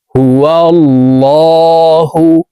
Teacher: শিখে নেই কুলহু আল্লাহু এই লামকে ল বলে পড়তে হবে কারণ আল্লাহ শব্দের আগের হরফে জবর অথবা পেশ হইলে এই লামকে ল অর্থাৎ মোটা করিয়া পড়িতে হয়